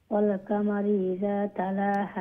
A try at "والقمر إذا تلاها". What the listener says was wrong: কাফটা আর একটু স্ট্রং করিয়া ওয়াল কামারি ইযা তালাহা